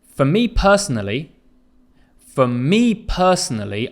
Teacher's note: listen to the intonation for me personally for me personally I'm emphasizing me